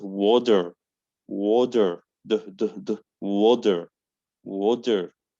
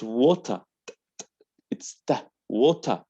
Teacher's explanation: T in American is near from D, but in British, it's original T.